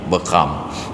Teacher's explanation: Kalau di Aceh Besar, ra itu yang jadi ghin, bekam.